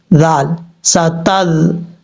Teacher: ذال بغیر سیٹی کے ساتھ پڑھا جائے گا، اس کو سیٹی کے ساتھ نہیں پڑھنا